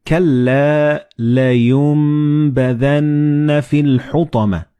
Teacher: So the noon and ba, when they follow one another in the same word, you don't pronounce noon or ba, but you pronounce meme.